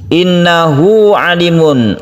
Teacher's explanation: huruf tersebut dipanjangkan satu alif karena sebelum ha ini terdapat vokal, dan setelah ha ini juga merupakan vokal. Jadi, huruf ha ini diapit oleh dua huruf vokal. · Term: mad silah qasirah